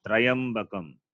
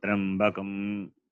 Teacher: It is Takara plus Repa plus Yakara. Not that Takara plus Repa plus Akara plus Yakara. There is no vowel after Repa.